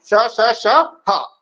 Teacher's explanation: जैसे कि हम बोलते हैं श, श, श, ह, तो इसमें एक प्रकार की रगड़ होती है हमारे जिह्वा में, तो उस प्रकार के व्यंजन को हम बोलते हैं उष्म व्यंजन।